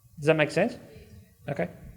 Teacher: did you notice how does that gets reduced quite often so it sounds more like one word rather than two separate words